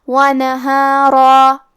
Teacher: ہمیں را کو اور مد الف کو دونوں کو بھاری آواز میں پڑھنا ہے۔ وَنَهَارًا قَالَ رَبِّ إِنِّي دَعَوْتُ قَوْمِي لَيْلًا وَنَهَارًا فَلَمْ يَزِدْهُمْ دُعَائِي إِلَّا فِرَارًا۔ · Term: تفخیم